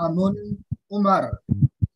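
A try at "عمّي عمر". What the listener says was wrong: Ammi, ada ya-nya.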